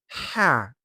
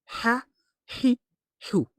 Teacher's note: The sound ha comes from the middle of the throat